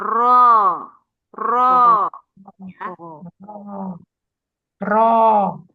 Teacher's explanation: Setelah tadi ujung lidah kena ujung langit-langit atas masuk ke ujung lidah yang bergetar. Ya, jadi ro ini dia timbul karena ujung lidah ini bergetar ya. Ro dia bergerak dari atas ke bawah.